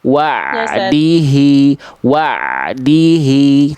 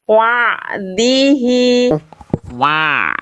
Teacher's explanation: Di tengah tenggorokannya, Bunda. Bukan dimasukin ke hidung. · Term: ain sukun